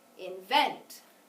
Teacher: the second syllable was louder longer and higher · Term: accent